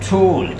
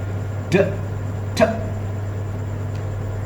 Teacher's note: You will feel that your tip of the tongue is touching the alveolar ridge, इसको कहेंगे alveolar sound.